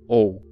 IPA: oʊ̯